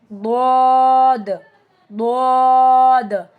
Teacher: ضاد زبان کے کنارے کو اوپر کے داڑوں سے ملانے سے ضاد ادا ہوتا ہے، ٹھیک ہے؟ One side of the tongue touching مولرز اور اٹس آلسو ہیوی لیٹر، بھاری حرف ہے یہ بھی.